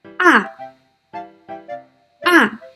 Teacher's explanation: The last one, the fourth tone. The fourth tone is a high falling tone represented by this tone mark.